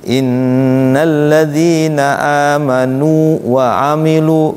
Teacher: Jadi jangan diidghamkan, nu-nya dipanjangin, mad tabi'inya, wawunya tetap. Makanya cara bacanya jangan seolah-olah ke idgham. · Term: mad tamkin